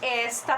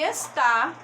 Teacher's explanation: esta, percebam que a sílaba tônica é es. E está, a sílaba tônica é tá, que inclusive é acentuada essa sílaba, não é?